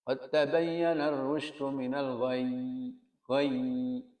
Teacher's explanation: mengalir agak panjang sedikit karena ya itu memiliki sifat rikhwah